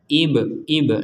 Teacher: mim sehingga dimasukkan dan didengung didengungkan kita lanjutkan mim Maqi Ibrahim ada ba sukun kita pantulkan